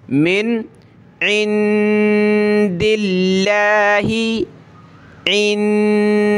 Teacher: लफ्ज़ अल्लाह से पहले ये ज़ेर है दाल पे, तो इसको पतला करेंगे, बारीक करेंगे।